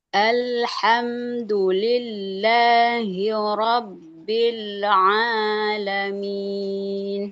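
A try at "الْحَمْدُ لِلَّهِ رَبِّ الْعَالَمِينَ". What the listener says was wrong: Oke, Robbil Alamin. ketika lam ke ain jangan terlalu kuat Bu. Tawasud itu kan ngalir suaranya sedikit, kemudian kondisinya semakin melemah tuh saat ngalir tuh ya. Jadi tidak sampai robbil jadi kayak ada pantulan robbil robbil tapi robbil alam pisah antara lam sama ain. Maksud pisah tuh di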